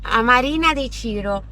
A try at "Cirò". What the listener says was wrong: Ciro, accento sulla O.